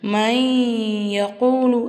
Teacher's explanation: ஒரு எழுத்தை இன்னொரு எழுத்தோட ஜாயின் பண்ணி குன்னா செஞ்சு ஓதணும். அதுதான் இதனுடைய சட்டம்.